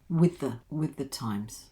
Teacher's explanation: these two ths together become one